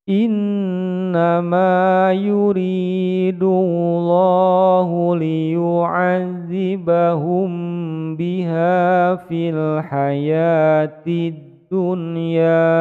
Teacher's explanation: Ini bacaannya dipanjangkan ikhfa safawi, panjang dua ketukan.